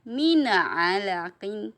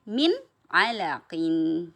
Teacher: tidak boleh mina alaqin, tidak boleh ya, tapi min alaqin. Jadi jangan dipantulkan.